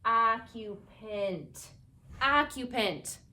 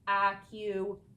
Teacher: the A-N-T ending often makes that A have the schwa sound if the word has more than one syllable. So I'm going to read this using the schwa sound.